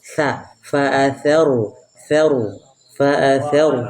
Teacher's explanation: Bukan pakai sya, pakai ujung lidah dengan ujung gigi.